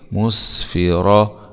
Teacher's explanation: راء فتحه مع التفخيم